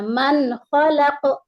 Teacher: یعنی کہ اظہار حلقی، یہاں پر نون کو ہم اظہار کریں گے ہے نا، ناک میں چھپا کر نہیں پڑھیں گے ، اور جلدی جب اظہار کرتے ہیں تو جلدی پڑھتے ہیں،